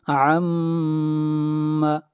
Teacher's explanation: میم کے اوپر شد ہے، غنہ ہوگا